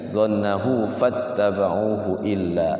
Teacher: Jadi fa-nya panjang tapi karena depannya ada tasydid maka dibaca pendek.